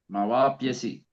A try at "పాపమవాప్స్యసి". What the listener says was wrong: మవాప్స్యసి సావత్తు యావత్తు రెండు ఉన్నాయి సార్.